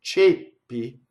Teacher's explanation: it's a closed E before a double P.